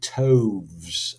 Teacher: with toves as well, we've got a long diphthong sound in there, so it sounds a little bit like toads.